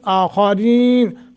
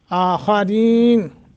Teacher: आखरीन खा मोटा रा बारीक